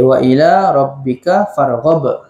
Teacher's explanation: Ghab yang hujung tu qalqalah kubra, besar.